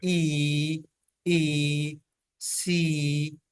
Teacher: जो लिप्स होते हैं रिलैक्स्ड होते हैं और स्प्रेड होते हैं, जैसे ई ई सी, इसमें जो ई साउंड है। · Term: अनराउंडेड वाउल्स